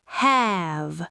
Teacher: Have ends in the voiced V sound. Long vowel